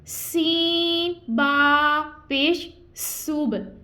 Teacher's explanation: سین میں سٹی کی آواز آئی اور با میں آواز کو لٹایا ہے ہم نے